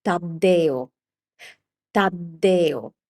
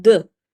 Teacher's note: So this is a D sound and in order to make it a double consonant sound, we just keep the sound for longer. We elongate the sound.